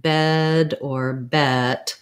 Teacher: when i'm saying a word like bed or bet my jaw doesn't open too far it's basically kind of central it's the same amount of opening i have for the schwa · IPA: /ɛ/